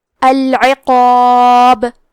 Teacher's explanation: کلمت العقاب میں حرف القاف ہے اور اس کے بعد مد الف ہے، مد الف میں پیچھے والے حرف کا حکم لیتے ہیں تفخیم میں اور ترقیق میں، تو کیونکہ مد الف سے پہلے حرف القاف ہے تو ہمیں یہ دونوں حرف کو بھاری آواز میں پڑھنا ہے۔ العقاب، آخری میں حرف البا پہ رکیں گے تو اس پہ جزم سے رکیں گے، تو یہاں با کا حکم ہوگا قلقلہ۔